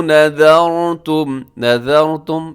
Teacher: اس میں را موٹا ہے، را ساکن سے پہلے والے حرف کے اوپر حرکت ہے